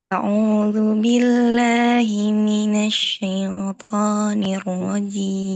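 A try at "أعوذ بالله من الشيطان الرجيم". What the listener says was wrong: Nah, harakatnya diperhatikan ya. Bukan syi dia bukan e tapi fathah a syaitoni.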